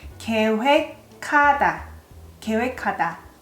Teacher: When you have G and H together, G as the last consonant and H of ha is the first consonant. In that case, it sounds more like K.